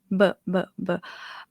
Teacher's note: Bob Mai in Thai is a voice sound but is not as voiced as English B. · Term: B my sound